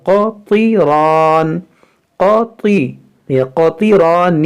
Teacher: یہ قاف حروف مشتعلیہ ہے، طا بھی حروف مشتعلیہ ہے، یہاں پر دیکھیں را پر زبر ہے تو یہ تینوں حرف موٹا ہوگا